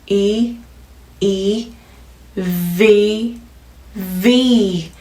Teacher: V sound, 윗니로 아랫입술 끝을 살짝 성대 울림 꼭 넣어주셔야 돼요.